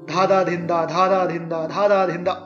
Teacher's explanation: improvise with dha, a long beat, and dhin, a short beat, to make a 8-beat taal.